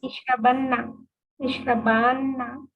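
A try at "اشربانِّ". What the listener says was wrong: Ishrabani. After alif, you will always see that there is noon with kasra. It will not come with fatha. noon al-thaqila,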